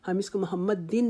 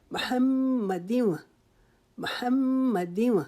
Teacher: آگے میم کے اوپر شد ہے، اس کے اوپر ہم ایک الف کے جتنا رکیں گے. محمد، دال کے نیچے دو زیریں ہیں، ان کو آگے واو کی جو شد ہے اس کے ساتھ ملا دیں گے. ہم اس کو محمد دن نہیں پڑھیں گے.